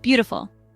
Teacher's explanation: Next word is beautiful. 3 syllables word. Stress is on first syllable.